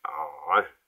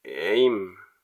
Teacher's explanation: C'est pas un H aspiré, c'est une sorte de contraction de la gorge qui fait. Donc ça fait aim.